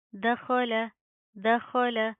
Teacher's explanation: خو کو پروپر منہ کو پر کر کے پڑھیں گے